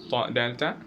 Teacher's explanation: ta dal ta from tip of the tongue and the gum line just before the upper teeth